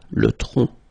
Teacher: final C is not pronounced here